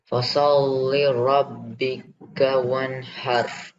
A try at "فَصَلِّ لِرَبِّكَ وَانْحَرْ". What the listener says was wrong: Remember to read this li as well. So you should read fasol lili.